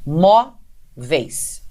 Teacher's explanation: a sílaba tônica não é a última, porque aí existe um ditongo, mas sim a penúltima. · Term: paroxítona